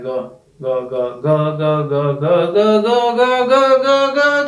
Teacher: ग क्या है? हमारा सघोष है, क्योंकि उसमें कंपन होता है।